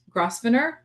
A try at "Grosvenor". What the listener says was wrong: is silent. The S is silent, so it's Grosvenor.